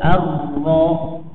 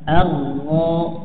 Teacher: ro-nya getarannya enggak boleh lebih dari sekali ya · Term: sekali getaran